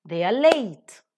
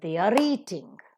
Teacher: Before consonants, it is pronounced as a, and before vowels, it is pronounced with r sound, So they are late, but they are eating, because eating begins with a vowel sound. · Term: weak form